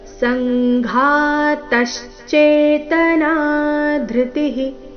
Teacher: ಸಂಘಾತ ಸ ಮೇಲೆ ಆಘಾತ ಮುಂದೆ ತ ಮೇಲೆ ಆಘಾತ